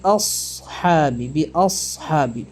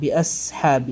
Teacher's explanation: സ്വാദ് ഉച്ചരിക്കുമ്പോൾ അതിനെ നമ്മൾ കനപ്പിച്ച് കട്ടിയാക്കിയിട്ടാണ് തഫ്ഹീം ചെയ്തുകൊണ്ടാണ് ഉച്ചരിക്കുക സ് എന്നാണ് സ് നമ്മുടെ നാവിന്റെ പിറകിലെ അറ്റം മുകളിൽ തട്ടുന്നത് നമ്മുക്ക് അനുഭവപ്പെടും